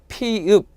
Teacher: 나오는 방식이 풍선이 한 방에 펑하고 터지듯이 터트리면서 나온다 그래서 파열음